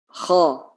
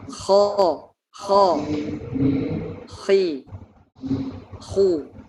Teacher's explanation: Huruf kho makhrajnya adalah di tenggorokan bagian atas. Kho. Maka dari itu, karena makhrajnya di pangkal di tenggorokan bagian atas, maka bibir tidak perlu ikut-ikutan.